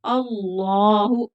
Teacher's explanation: अल्लाह का लाम मोटा पड़ा जाएगा क्योंकि पिछले हर्फ पर जबर है।